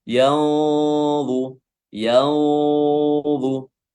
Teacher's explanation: karena dia bertemu dengan huruf tebal dha, maka ikhfa-nya juga ikutan tebal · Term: ikhfa haqiqi